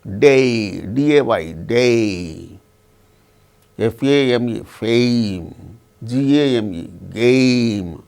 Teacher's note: So, this one, when we utter the word bay, name, fail, it starts with the sound a, ends with the sound e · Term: diphthong